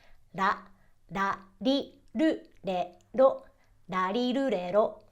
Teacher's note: somewhere between an l and a d sound to produce the sound you almost want to snap your tongue · you almost want to snap your tongue off of the roof of your mouth